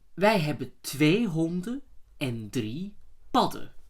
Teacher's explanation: in the plural you do hear the D and the B.